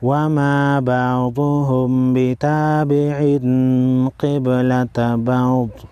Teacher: وما بعضهم بتابع قبلة بعض، با ساکن پر قلقلہ کریں گے، قاف اور ضاد حروف مستعلیہ میں سے ہے، موٹا پڑھیں گے۔